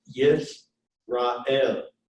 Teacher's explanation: So, for example, in this word Yisrael, that schwa is what we call silent. And there's actually only 3 vowels here.